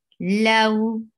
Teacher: Lau is two counts long and a soft vowel